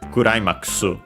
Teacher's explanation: the u in the final ku barely heard if at all, because it's between unvoiced consonants